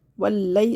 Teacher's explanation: واو کو لام سے ملائیں گے، واو لام زبر ول، لام یا زبر لئی، ولئی، اس کو واللئی نہیں کرنا ہے، باریک کرنا ہے